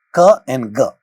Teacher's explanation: Ka, according to place of articulations, it's a velar sound. Ga also, according to place of articulation, it's a velar sound.